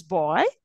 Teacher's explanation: my tongue is gliding from one sound to another sound of the vowel it is gliding that's why they are called vowels of Glides